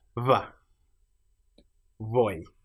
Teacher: And these are pronounced as a physical cross between saying a b and a v by simply having the lips close but not quite touching